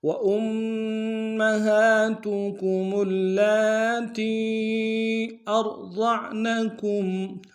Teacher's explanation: یا کے اوپر مد ہے، چھوٹا سا مد ہے، کم سے کم 2 امتحان میں کھینچیں گے۔